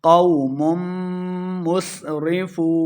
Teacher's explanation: قو، لمبا بالکل نہیں کرنا۔ مم میم کو میم کے سامنے لانا ہے، میم مشدد ہے، غنہ کر کے پڑھیں گے قوم مسرفون، وہ مدہ ہے، یہاں پہ 2 حرکات، ہم نے اس کو لمبا کر کے پڑھنا ہے۔